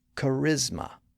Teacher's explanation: it has three syllables and the stress in the middle